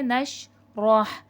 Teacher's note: ہا حلق سے ادا ہوگا کیونکہ ہا حرف حلقی ہے